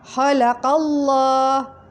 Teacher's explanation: hukum bacaan lam jalalah tafkhim yang dibaca tebal